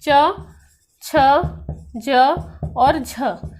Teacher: स्पर्श संघर्षी हम इन्हें क्यों कहते हैं, क्योंकि वायु रगड़ के साथ बाहर निकलती है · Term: स्पर्श संघर्षी व्यंजन